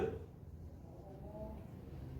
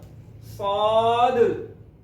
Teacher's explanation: कलकला, उसमें आवाज लौट के निकलती है। वो कायदा इंशाल्लाह आगे मजीद जाकर पढ़ेंगे, इसलिए मैं इसको पढ़ रहा हूं सौद, और इसको पढ़ना है तौद।